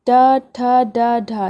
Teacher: ये मूर्धा से आवाज़ आ रही, मुंह के भीतर की छत का अगला भाग जो ऊपर का है नहीं उसके अगले भाग से, इसे मूर्धन्य बोलते हैं।